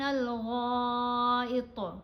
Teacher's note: غین کو ہم نے موٹا پڑھنا ہے، طا کو بھی موٹا پڑھنا ہے. غین کے اوپر مد ہے، 5 الف کی مقدار جتنا غین کو لمبا پڑھا جائے گا